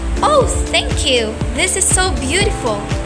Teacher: This signifies that speaker is smiling while talking resulting a slight slightly higher pitch, brighter tone and a cheerful or friendly impression. It conveys joy, warmth, or an attempt to sound reassuring even if the words themselves aren't explicitly positive. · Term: smiling voice